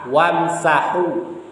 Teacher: ha tipis ini disebutkan di tengah-tengah tenggorokan